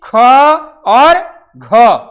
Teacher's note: ख और घ जो है आपके ये महाप्राण है महाप्राण में ह का जैसी आवाज आती है ह का जैसी ध्वन निकलती है ठीक है तो ये ध्यान